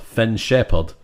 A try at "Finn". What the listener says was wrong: It sounds like you said Fen. No, because when you said it the second time, it did sound like Finn.